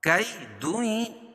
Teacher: اس میں ناک میں آواز کو چھپا کر پڑھیں گے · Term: اخفا حقیقی